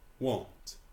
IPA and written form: wɒnt (want)